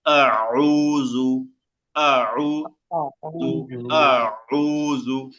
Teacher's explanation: এক নাম্বার আইনটা গলার মাঝখান থেকে আসে